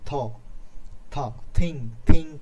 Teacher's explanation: দাঁতের উপরিভাগের সাথে আমাদের জিহ্বার উপরিভাগটা কিন্তু ঠেকে গেছে, ওপরের যে পাটির দাঁতটা রয়েছে সেটা কিন্তু ঠেকে গেছে। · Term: ডেন্টাল